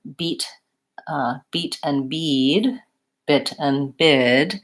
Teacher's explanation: Beat and bit are generally the shortest, versus bid and bead are going to be longer. So paying closer attention to whether or not there's a voice sound at the end.